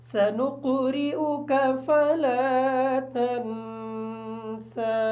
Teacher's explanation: سنقرئک کی جو را ہے، اس را کے نیچے زیر ہونے کی وجہ سے ہم اس کو باریک پڑھیں گے